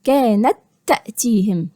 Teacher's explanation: يبقى هنطقها كحرف واحد مشدد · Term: ادغام كامل